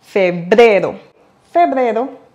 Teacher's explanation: pour le prononcer comme un locuteur natif, n'oubliez pas d'accentuer sur le deuxième E.